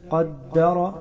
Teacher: قاف حروف مستعلیہ موٹا کر کے پڑھیں گے. قدر دال پر تشدید ہے، اس کو بھی سخت پڑھیں گے.